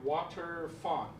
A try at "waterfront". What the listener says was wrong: But we need water front. So you got to get that FR together.